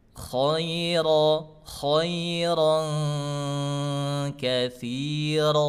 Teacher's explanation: Ayo rnya tebal-tebalkan. Rnya tebalkan. Naik ke pangkal lidahnya terus.